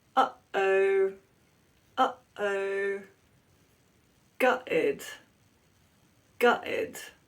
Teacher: That means that they pronounce it as a glottal stop. A glottal stop is where the vocal folds come together, but only for a moment, and stop the sound.